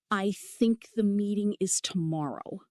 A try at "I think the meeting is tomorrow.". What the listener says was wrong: Better, but you're still not dropping your jaw. Here's the secret. Put your fingers under your chin. Push down slightly as you say important words. This trains your jaw to move automatically.